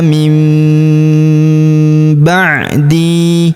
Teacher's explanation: Kemudian huruf nun sukun bertemu huruf ba, maka nun sukunnya melebur ke huruf ba, kita baca dengung dan kita tahan dengungnya 2-3 harokat. Nun sukunnya berubah menjadi mim ya. Ma ta'buduna min ba'di.